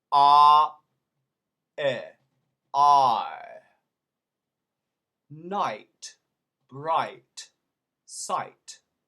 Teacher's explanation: In England, the way to do the I sound is actually ah, A-H, ah, to I, as in it. Now watch, my jaw doesn't move. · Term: diphthongs